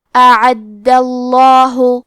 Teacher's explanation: کلمت اعد میں حرف دال کو 2 حرف کے برابر پڑھیں گے کیونکہ اس پہ تشدید ہے، اور کیونکہ تشدید زبر کا ہے تو لفظ الجلالہ کلام کا حکم ہے تفخیم، تو ہمیں حرف اللام کو موٹی آواز میں پڑھنا ہے